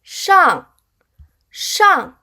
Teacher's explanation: “上” là âm đầu lưỡi cong. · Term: 翘舌音